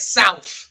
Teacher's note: That TH comes off as a f sound. Right. It's not a th sound like in most places.